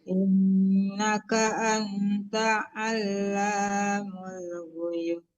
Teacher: Alamul, panjang la-nya ya, hati-hati di huruf yang panjang, jangan dilewatin aja ya, Bu.